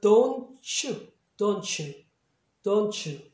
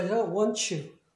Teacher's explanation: T 다음에 U가 있으면 얘를 구개음으로 발음하셔야 돼요